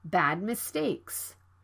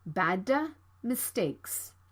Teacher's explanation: another plosive consonant d is right before the consonant sound m you need to stop the d sound and move to the m sound right away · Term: unreleased